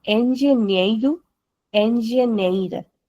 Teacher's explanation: Wherever we have NH together, the sound is nya. आधा ना आधा या हिंदी में.